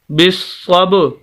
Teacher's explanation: صاد کو سخت کر کے پڑھیں گے، آواز کو روک کر اور سخت کر کے